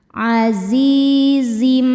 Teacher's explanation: Zi hukumnya mad tabi'i dhahiri, sebab ada ya sukun sebelumnya kasrah. Cara bacanya huruf zai dipanjangkan 2 harokat.